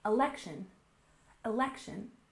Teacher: next we have election we stress the second syllable